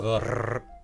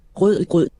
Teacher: Instead of a front-of-the-tongue trill rrr, it's a back-of-the-mouth r. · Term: guttural r